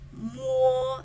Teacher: Your mouth is making the same shape, but you make a different type of sound. You let it sort of ring in your nose cavity a little bit, your nasal cavity a little bit. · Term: nasal sound